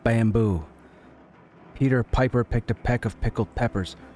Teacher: you're going to hear a little bit of air behind each of those consonants as I say them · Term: plosives